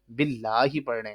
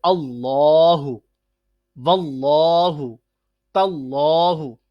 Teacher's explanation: اللہ، واللہ، تاللہ، ٹھیک ہے، جب زبر آ گئی تو پھر ہم نے اس میں جلالت کے لام کو موٹا کر کے منہ کو پھلا کر پڑھا